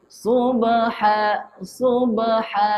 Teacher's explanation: Qalqalah sughra. Berlakunya dengan huruf ba. Lantunan kecil.